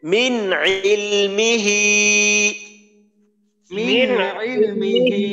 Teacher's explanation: না, হবে না কোনো। হ্যাঁ, মিন মিন ইজহার, তার মানে নুন সাকিনকে স্পষ্ট করে পড়তে হবে। মিন ইলমিহি, মিন ইলমিহি আচ্ছা, ইল্লা বিমা শা, ইল্লা বিমা শা ইল্লা বিমা শাআ।